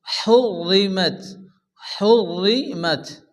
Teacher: তো র সেকেন্ডের ডান দিকের অক্ষরের উপরে পেশ অথবা জাবর আসলে রকে পুর অর্থাৎ মোটা করে উচ্চারণ করে পড়তে হয়